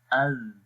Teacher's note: ذال حرف کے اندر جو پہلی صفت ہے وہ صفت جہر ہے، اور صفت جہر کے اندر ہم سانس بند کر دیتے ہیں۔ تو جب ذال پڑھیں گے تو سانس بند ہو جائے گا، سانس جاری نہیں رہے گا۔ تو اب اس کی مثال پڑھیں گے، حمزہ ذال زبر اذ۔